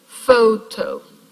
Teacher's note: Pho is a syllable with a diphthong, so it's a strong syllable. But in the very same word, yeah, the toe also has a diphthong, is also a strong syllable, but it's not stressed.